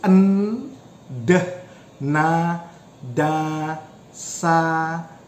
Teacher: so your tongue is touching your alveolar ridge